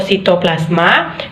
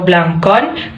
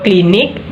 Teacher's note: gugus yang konsonan keduanya berupa konsonan lateral